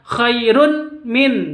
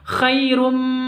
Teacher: bacanya Idgham Bighunnah masuk langsung ke mimnya